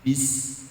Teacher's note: Huruf ba itu jahar, ya. Tidak ada nafas yang ngalir.